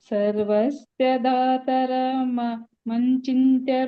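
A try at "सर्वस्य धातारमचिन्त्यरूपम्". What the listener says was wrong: ಮಚಿಂತ್ಯ ಮಂಚಿಂತ್ಯ ಇಲ್ಲ ಮ ಪಕ್ಕ ಸೊನ್ನೆ ಇಲ್ಲ ಚಿ ಪಕ್ಕ ಇದೆ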